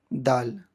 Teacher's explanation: یہ دال سیرہ زبان اوپر کے سامنے والی دانتوں کی جڑ سے دال ادا ہوتے ہیں